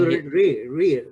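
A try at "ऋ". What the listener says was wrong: Yeah, it's not Ri. It's not Ri. It's R. That R you should be able to extend infinitely. Krishna. That is how it should be pronounced.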